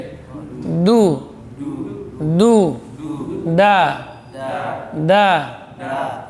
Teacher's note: ujung lidah diusul jadi menekan pangkal gigi seri atas